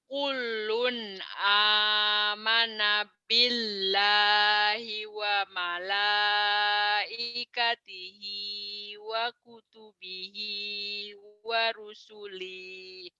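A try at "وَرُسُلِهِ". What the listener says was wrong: Wa rusulih. Pendek kan nggak ada mad. Wa rusulih. Kullun kullun amana billahi wa malaikatihi wa kutubihi wa rusulih.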